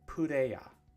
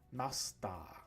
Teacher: many final R sounds become A in Romaji, or one of the syllables that ends in the A sound. So for example, the word player is pureya, right?